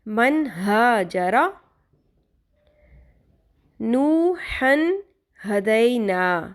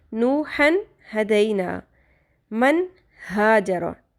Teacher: ہم نے نوحن پورا پڑھا، اس کو چھپایا نہیں، غنہ نہیں کیا